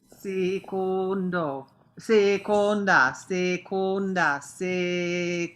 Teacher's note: make the O's super closed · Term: closed vowel